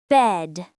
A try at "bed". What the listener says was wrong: Say it short. Bed, not bad.